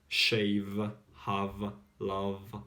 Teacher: You need to pronounce as well the V sound, like with the vibrations.